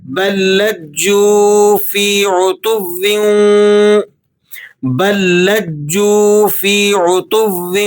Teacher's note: پہلا لام سائلنٹ ہو جائے گا اس لیے کہ دوسرے لام پر تشدید لگی ہوئی ہے، تو با کو ڈائریکٹ آپ نے سیکنڈ لام کے ساتھ ملا کر پڑھنا ہے اور لام کو پھر آپ جیم کے ساتھ سختی کے ساتھ ملا کر پڑھیں گے۔